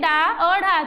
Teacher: जीभ हमारी होती है ऊपर उठकर मुर्धा को स्पर्श करती है मुर्धा मतलब मुंह को स्पर्श करती है और फिर टके के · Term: उच्छिष्ट व्यंजन